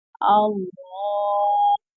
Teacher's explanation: اب یہاں پر جو کھڑی حرکات کا قاعدہ لگ رہا ہے، اور لفظ اللہ کے لام سے پہلے حرف کے اوپر زبر آ رہا ہے، تو اس لفظ اللہ کے لام کو ہم نے موٹا بھی پڑھنا ہے، اور تشدید والا لفظ بھی جو ہے 2 دفعہ پڑھا جاتا ہے، کہ ایک دفعہ اپنے سے پہلے متحرک حرف سے مل کر اور دوسری بار اپنی حرکت کی وجہ سے ذرا رک کر۔